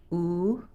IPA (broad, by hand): u